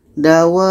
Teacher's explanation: Wa kita panjangkan 6 harkat baru masuk ke ba. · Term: mad lazim kilmi mutsaqqal